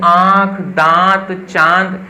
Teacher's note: और वहीं जो अनुनासिक होता है, इसका उच्चारण नाक और मुख दोनों से नाक और मुख दोनों से मिलकर जो है इसकी ध्वनि निकलती है